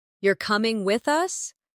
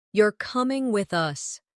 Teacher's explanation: The rise in your voice at the end of the question signals uncertainty, while the drop at the end of the statement signals certainty.